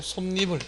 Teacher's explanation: 소리상 니은이 첨가돼서 솜니불 이런 식으로 된다